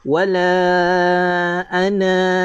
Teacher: Tetapi bila mana tuan-tuan nampak bulat tegak seperti ini, tuan-tuan nak wakaf pada dia, tuan-tuan nak berhenti pada kalimah ana ini, maka wakafkan dengan 2 harakat.